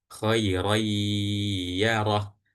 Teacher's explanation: Karena ada tanwin yang di ada di huruf ro bertemu dengan huruf ya, maka dari ro ini langsung masuk ke huruf ya dan ya-nya didengungkan. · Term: idgham bighunah